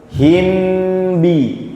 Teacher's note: mim sukun ketemu ba gerakannya cuma satu enggak butuh dua gerakan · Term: ikhfa